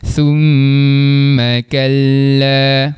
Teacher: Dengung dekat huruf mim yang bersabdu dengan kadar dua rakaat. Mim baris atas dibaca pendek. Sebab apa? Sebab tak ada huruf mad selepasnya. · Dengung dekat huruf mim yang bersabdu dengan kadar 2 harakat.